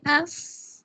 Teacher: اس کے اندر بھی ایک کمزور سی سانس جاری ہو رہا ہے آواز کے ساتھ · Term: ہمس